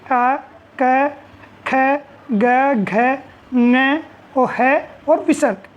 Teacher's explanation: अकुह विसर्जनीय नाम कंठ है। ये सभी कंठ से उच्चारित होने वाले वर्ण हैं।